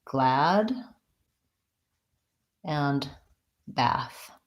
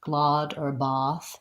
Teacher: So he's asking about the words glad and bath and whether or not they have vowel a, like in black cat, or vowel ah, like in not hot. So I pronounce both of those with the a, black cat vowel.